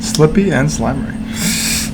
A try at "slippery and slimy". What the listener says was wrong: No, slippery and slimy. I think you said slimery. I think you said slimery.